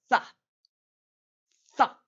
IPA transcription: θ